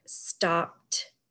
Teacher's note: if you say the word stopped you say t instead of d